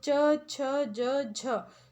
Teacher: तालू से बोले जाने वाले व्यंजन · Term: ताला व्यंजन